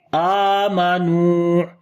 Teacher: تو ایک اور چیز یہاں پر یہ سمجھ لیں کہ چاہے آپ یہاں پر ملا کر پڑھیں چاہے آپ یہاں پر رکیں، تو یہاں پر آمنو ہی پڑھا جائے گا. رکنے کے اوپر بھی جب رکیں گے تب بھی آمنو لمبا کر کے پڑھیں گے کیونکہ حروف مدہ ہے